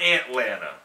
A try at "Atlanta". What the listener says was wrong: Who says ant? You pronounce the A-T more than anything else.